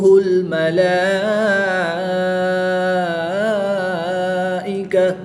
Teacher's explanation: کھڑی زبر کے بعد حمزہ اسی کلمے میں ہے تو یہاں پر مد متصل ہوگی، 3 سے 5 الف تک کھینچ کر پڑھیں گے، گول تا کو وقف میں ہاں ساکن سے بدل دیں گے۔